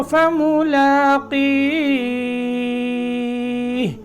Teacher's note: قاف کو لمبا کرنا ہے. قاف کے بعد ہے یا ساکن، ٹھیک ہے. یا ساکن آ گئی تو یہاں اس کو کھینچنا ہے اور پھر ہا پہ وقف کر رہے ہیں تو فملاقیہ.